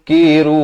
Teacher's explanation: samarkan daripada mun jadi mu, samarkan kata nun pun tidak, kaf pun tidak ya